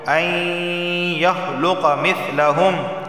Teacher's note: نون ساکن کے بعد یا حروف یرملون کا آیا ہے، ادغام اور غنہ دونوں ہوں گے